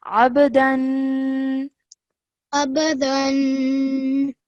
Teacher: Yes, and over here, ba is one of the qalqala letters. So when you join the ayn to the ba, you have to bounce off the sound of the ba